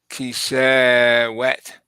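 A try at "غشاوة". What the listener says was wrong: Not wet because this turns into a hamza if you stop. A hamza. A ha if you stop. A ha with the sukoon. It turns to a ha with the sukoon.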